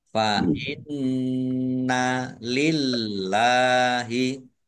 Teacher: Nun tasdid dibaca runnah atau mendengung. Ditahan biar tampak dengungannya.